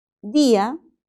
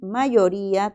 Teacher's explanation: encontramos un hiato acentual porque la I suena más